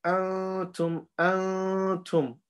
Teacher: We take the sound to the nose instead of pronouncing it from our tongue and saying antum with the makhraj.